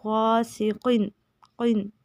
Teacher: قاف کا مخرج ہے، زبان کی جڑ اوپر تالو کے نرم حصے سے لگے · غاسقن میں غائن کو موٹا کریں گے اور قاف کو بھی موٹا پڑھیں گے. غاسقن قن، ٹھیک ہے.